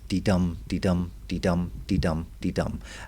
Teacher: an unstressed syllable followed by a stressed syllable. So this would be one foot. · an iambic is called a rising rhythm because it rises into the second stressed syllable